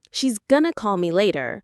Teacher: You'll hear stress on call and later while she's going to is almost whispered.